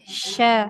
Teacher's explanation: Dan sa, shin dan sin. Nah, huruf sya dia tengah lidah dengan langit-langit